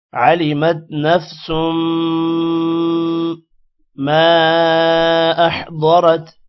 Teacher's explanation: سین جب میم کے ساتھ ملے گا تو دو پیش کی وجہ سے غنہ ہوگا